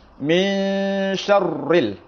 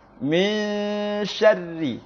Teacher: Harusnya tipis karena huruf ra-nya berharokat kasrah. Contoh yang benar, min syarri, tipis.